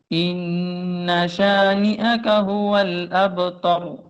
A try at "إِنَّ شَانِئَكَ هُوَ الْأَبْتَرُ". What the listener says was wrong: شاباش شاباش.